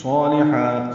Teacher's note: صالحہ، صاد پر ہے، موٹا پڑھیں گے اس کو، حروف صفیریہ میں سے ہے، اور 2 حرکات لمبا بھی کریں گے.